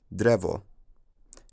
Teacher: In the blue culture, the sound became somewhat palatalized